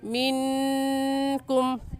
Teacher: मिनकुम की भी नून साकिन पर गुन्ना करेंगे, क्योंकि नून साकिन के बाद हरूफ हल्की जो कि 6 है, हमज़ा हा आइन हा गैन ख्वा में से कोई लफ्ज़ नहीं आया।